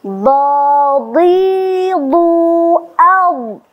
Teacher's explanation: Karena huruf do adalah huruf yang mutbaqah, ada sifat itbaq. Ya, tetap dia dalam kondisi kasrah tetap dibaca tebal